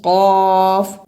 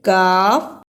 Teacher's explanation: یہاں قاف اور کاف دونوں میں فرق ہے اور اسی فرق کو واضح کرنا ضروری ہے۔ قاف کو موٹا پڑھنا ہے جبکہ کاف کو نرم زبان سے ادا کرنا ہے